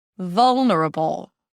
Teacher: So it colors the vowel before V. And it actually sounds like you're putting a neutral O sound or the O as in all before the L sound. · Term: dark L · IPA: ˈvʌlnəɹəbəl